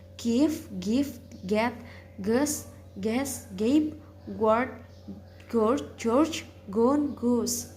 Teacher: Voice velar stop sound G